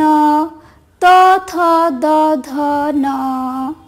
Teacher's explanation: দাঁতে আর জিভে মিলে দন্ত ন